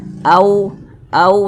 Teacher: sebelum W sukun ada huruf yang memiliki tanda baca fathah maka huruf wau sukunnya ini adalah huruf Lin maka cara membacanya itu mudah ya dilunakkan